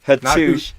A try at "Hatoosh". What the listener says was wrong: Not hoosh. You have to say the two. Hatoosh.